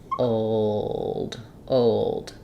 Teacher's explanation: I tend to use the dark L where I'm not lifting my tongue to close for the L and I just have o i use more of awah there